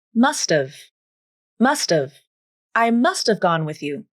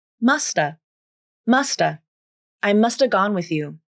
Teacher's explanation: the final T in must remains a True T sound - it doesn’t turn into the flap.